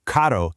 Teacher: a double R, well, that's that famous rolling Spanish trill. So, carro means car.